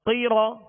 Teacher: قاف کو پر پڑھیں گے، 2 نقطے والا قاف ہے اور یہ حروف مستعلیہ میں سے، را کو پر پڑھیں گے ، را پر زبر ہے اس لیے را پر زبر پیش،